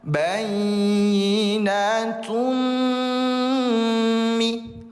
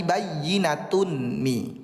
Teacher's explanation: Dimasukkan ke huruf berikutnya yaitu mim bertasdid. Lalu kemudian dengungkan dua harakat. Karena bigunna artinya dengan dengung. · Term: idgham bighunah